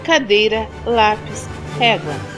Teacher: Paroxítonas, quando a sílaba mais forte é a penúltima.